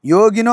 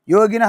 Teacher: కొన్నిసార్లు విసర్గం డ్రాప్ అయిపోతే నో అంటారు కొంతమంది విసర్గం వీడి తీసి చెప్పుకోవచ్చు ఓకేనా అది తప్పు కాదు ఇక్కడ యోగినో అని